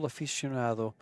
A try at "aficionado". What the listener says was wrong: You went into a little bit of Spanish then. Aficionado.